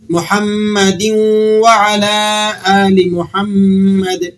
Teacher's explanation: محمدین نہیں پڑھنا بلکہ واو سے اس تنوین کو واو کے ساتھ جوڑ دینا ہے